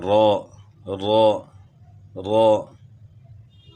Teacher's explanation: را کی ادائیگی میں پشتی زبان بھی داخل ہے، اور اس میں ایک دانت اور کم ہو گیا، یعنی نون میں کم ہو گیا تھا تو را میں ایک اور کم ہو گیا.